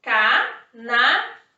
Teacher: A última sílaba é a mais forte, então é uma palavra oxítona